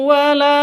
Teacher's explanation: La panjang dua harokat atau dua ketuk karena ada alif diawali dengan fathah.